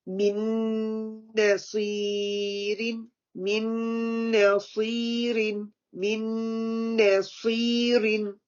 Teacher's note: noon sakin and the noon, the full gunna because it's a shadda, and the first noon going to be dropped.